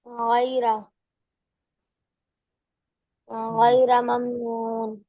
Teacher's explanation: غین سے ہی پڑھنا ہے، غیرہ غیرہ نہیں پڑھنا ہے، گاف نہیں ہے قرآن میں